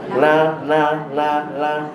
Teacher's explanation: Tempat yang sama, hujung lidah jumpa langit-langit atas.